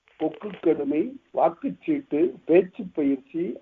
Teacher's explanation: கால் மாத்திரை அளவுதான் இங்க ஒலிக்கும். கொக்கு கடுமை, வாக்குச்சீட்டு, பேச்சு பயிற்சி, ஆற்றுப்பாய்ச்சல்ங்கிற இடத்துல எல்லாம் உகரம் முழுவதுமாக ஒலிக்கப்படுவதில்லை. இது கால் மாத்திரை அளவுதான் ஒலிக்கப்படும்.